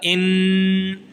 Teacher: غنہ کہتے ہیں ناک میں آواز کو دبا کر ایک الف کے برابر دبا کر رکھنے کو، ٹھیک ہے، اس کو کہتے ہیں غنہ۔